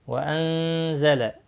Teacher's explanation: نون ساکن کے بعد حروف اخفا میں سے زا آیا ہے، اخفا حقیقی ہوگا